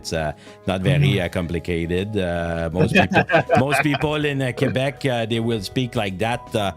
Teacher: So a lot of adding of extra vowels at the end of the words. Very nasal French. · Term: Quebecois